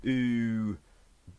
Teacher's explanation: say ooh um then ooh you're pushing the sound up and your tongue is kind of pushing the sound to the back so this is a high back vowel sound